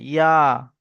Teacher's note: ইয়া এক আলিফ টান হবে